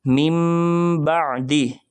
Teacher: نون ساکن کے بعد با آنے کی وجہ سے ہم یہاں نون کی جگہ میم کو پڑھیں گے